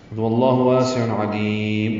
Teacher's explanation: مد عارض سکون بنے گی اور میم پہ ہونٹ بند ہو جائے گی